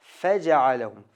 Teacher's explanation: Aslida yaxshirog'i faja'alahum, fa ochiq, to'liq chiqaramiz.